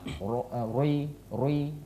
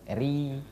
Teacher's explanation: Iya, jadi istifal namanya. Iya, jadi menghamparkan lidah kita ke langit-langit bawah itu membuat ro jadi tipis. Ro tebal, ri tipis.